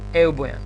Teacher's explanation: Тоа спиритусот е ленис, не е аспер и затоа не читаме, не му даваме вредност х